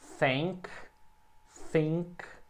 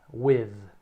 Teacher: Tem o som que é só o sopro, think, think, e esse som mais tremidinho aqui, with.